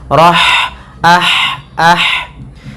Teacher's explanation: sifatnya ada hamasnya mengalirnya nafas kita